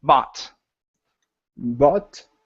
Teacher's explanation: three years okay that's getting better that's getting better okay and your last one is the word bot instead of but it's an ah sound bot bot uhhuh ah open the mouth instead of B bot